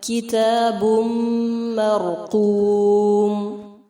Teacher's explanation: تنوین کے بعد میم ہے، ادغام غنہ کے ساتھ ہوگا، را مخفم ہوگا.